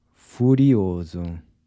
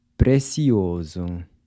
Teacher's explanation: the “s” is pronounced like a “z” when it’s between two vowels like this